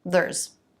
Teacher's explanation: It has the schwa rather than the e vowel. It's said more quickly.